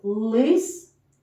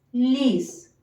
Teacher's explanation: у слові лис звук л твердий а у слові ліс він вже пом'якшений за допомогою голосного звука